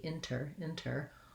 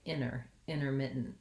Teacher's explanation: So I can say intermittent with an aspirated T, inter, or I might also say intermittent, in which case it sounds more like the word inner with just an N.